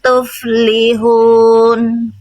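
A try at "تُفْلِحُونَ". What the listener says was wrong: H kecilnya tegaskan hak kecilnya bunda.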